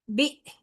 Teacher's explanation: حمزہ کے اوپر جزم ہے لہذا اس کی ادائیگی جھٹکے کے ساتھ ہوگی